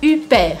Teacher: Estamos falando em francês, então você não vai fazer esse H sonoro. Ele vai ficar Huppert.